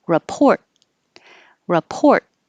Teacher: ends with a t but you won't hear the t it will hold your tongue in the t position